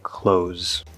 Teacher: I'm saying k l o z. Yes, with a Z sound, not an S.